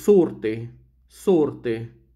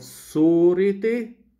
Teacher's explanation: This is what we call elision. And also, the shortening of the long vowel before double consonants, rt. So before that, in Egyptian Arabic, in no way you are not allowed to pronounce a long vowel. · First of all, the elision of the E sound.